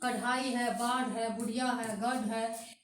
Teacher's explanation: वैसा व्यंजन जिसके उच्चारण करने में हमारा जीभ जो है मुंह से यानी मूर्धा से स्पर्श करते हुए तुरंत नीचे गिरती है, उसको हम लोग अतिरिक्त व्यंजन कहेंगे।